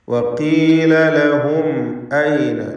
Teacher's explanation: ലഹും എന്നതിലെ സാക്കിനത്ത മീമിന് ഇൽഹാർ ഷഫവി നൽകി മണിക്കാതെ വെളിവാക്കി ഉച്ചരിക്കേണ്ടതാണ് · ഇസ്തിഅലാഇൻ്റെ അക്ഷരമായ ഖാഫ്, ഇതിനെ തഫ്ഖീം ചെയ്ത് സ്വരഭാരത്തോടെ ഉച്ചരിക്കണം